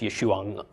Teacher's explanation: that name ends in an ayin. So there's actually a subtle sound at the end of the name. So it's Yeshua, except I'm belaboring it a little bit.